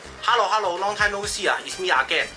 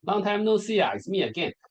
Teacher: So it's like da da da da da. Like every syllable is stressed, rather than in like native English. It's like some words are not stressed.